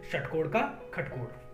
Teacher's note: जो मूर्धन्य श है, षटकोण वाला श है, उसका प्रयोग ख के रूप में मिलता है। कई जगह उसका उच्चारण ख की तरह से किया जाता है